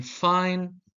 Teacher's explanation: F in fine uses the lower lip against the upper teeth